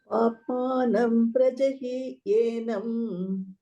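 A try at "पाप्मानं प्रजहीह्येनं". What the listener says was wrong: Hyenam, not yenam. Hyenam.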